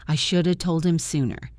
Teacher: we dropped the H in him.